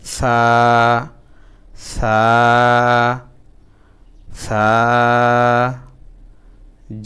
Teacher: জিহ্বার আগা দাঁতের আগা লাগাবো, তাহলে উচ্চারণটা খুব নরম হবে।